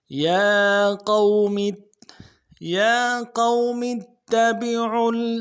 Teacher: میم کو آگے تا کے ساتھ ملائیں گے کیونکہ تشدید ہے تا کے اوپر، اور زور دیں گے